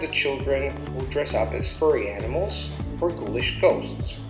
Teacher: Again, you also have the children going up, relative clause, and then you have furry animals. The tone is going up because I haven't finished, or ghoulish ghosts. You have the accent, the tone falling down on the last element.